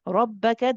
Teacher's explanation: Good, barakallah fiki. Rabbaka, the ra is maftuh, it has a fatha, so we make this heavy